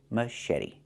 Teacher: And then eddie. The t makes a fast d.